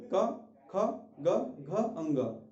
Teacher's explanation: जब खा को बोलेंगे थोड़ा और पीछे जाएंगे, गा को बोलेंगे और पीछे जाएंगे, घा को बोलेंगे और पीछे जाएंगे। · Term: कंठ